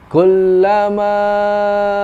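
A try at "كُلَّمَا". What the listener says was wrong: Kepanjangan. Kepanjangan. Ya, di ayun coba. Ingat tuh ya, ayunnya hanya di yang panjang aja.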